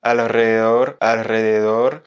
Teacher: Il faut arriver à mélanger à ce L qui est d'abord prononcé et enchaîner sur le R. Donc là, pour t'aider honnêtement, je t'invite plutôt à essayer de le prononcer rapidement parce que ça va t'aider à enchaîner plus facilement.